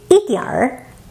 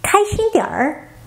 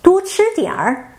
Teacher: a sound with a retroflex ending. It's used a lot in North China.